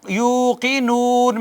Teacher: واو ساکن ما قبل مدہ پیش ہو تو وہ واو مدہ ہوتی ہے، اور اس کو ایک الف کے برابر کھینچتے ہیں